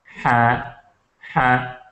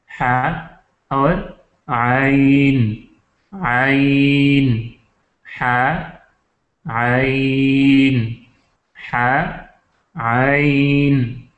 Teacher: پھر ہے وسط حلق، یعنی جو درمیان میں ہے، حلق کا وہ حصہ جو درمیان میں ہے، تو اس کو وسط حلق کہتے ہیں، اور یہاں سے دو حروف نکلتے ہیں، ایک ہے ہا، ہا، ہا جس کو ہم ہا حلوائی کہتے ہیں، حلوائی والا ہا، ہا، اور عین، عین، ہا، عین، ہا، عین۔